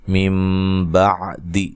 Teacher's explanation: بعد، یہاں نون ساکن کا اقلاب مع الغنہ ہے، ٹھیک ہے، نون کو میم سے بدل کے پڑھیں گے